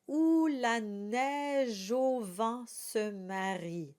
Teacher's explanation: We didn't talk about the oo sound, and that has to be very round. It's like an owl saying who, or who is coming to dinner.